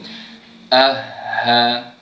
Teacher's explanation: huruf ha yang tebal ini, yang mana kedudukannya ataupun makhraj tempat keluarnya adalah di pangkal kerongkong kita, di bawah sekali.